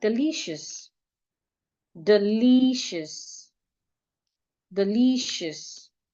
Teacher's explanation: the IOUS, so the vowel there, IOU, becomes a schwa